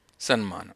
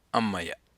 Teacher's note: ತ ಎನ್ನುವ ವ್ಯಂಜನಾಕ್ಷರ ಹೊರಟು ಹೋಗಿ ಅನುನಾಸಿಕವು ಪರವಾದರೆ ಅವಾಗ ಅದು ಸನ್ಮಾನ ಆಗುತ್ತದೆ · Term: ಅನುನಾಸಿಕ ಸಂಧಿ